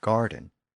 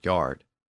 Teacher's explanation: The G sound at the beginning shifted to a Y sound, as so often happened in Old English words, and that gave us the word yard.